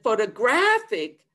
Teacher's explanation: the strong stress now is on the third syllable. I start with the minor stress standing, go down to the schwa, then I jump, and then I go down to the schwa.